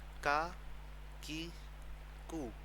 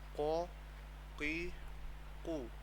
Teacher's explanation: کاف باریک ہے اور یہ والا قاف موٹا ہے